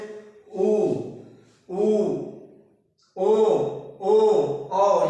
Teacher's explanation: इन वर्णों को बोलते हैं तो हमारी होठों की स्थिति क्या हो जाती है गोल हो जाती है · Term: वर्तुल